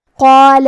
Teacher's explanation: کلمت قال میں قاف کو اور اس کے بعد مد الف کو تفخیم سے مطلب بھاری آواز میں پڑھیں گے